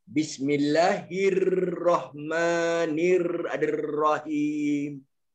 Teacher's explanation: Okey, takrir ni maknanya dia bergetar. Bergetar ni maknanya ada dragging sound.